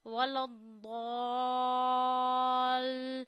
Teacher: لام کو جب دود سے ملائیں گے دود موٹا ہونا چاہیے، ولد نہیں پڑھنا کہ اسے دال بنا دیں.